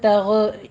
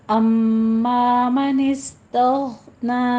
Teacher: गैन के ऊपर कलकला भी नहीं करना